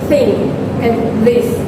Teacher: pronounced by inserting the tip of the tongue between the teeth